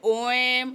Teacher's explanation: प्लुत स्वर होता है जिनमें सबसे अधिक समय लगता है